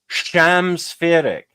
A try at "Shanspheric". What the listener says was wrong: Shan. An N instead of an M. Yeah, an N.